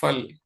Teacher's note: हम लोग दोनों होठों को नहीं मिलाते हैं। वो वास्तव में उर्दू वाला फ है।